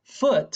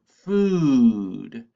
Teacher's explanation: foot has oo in it as well but it has an uh sound not an ooh sound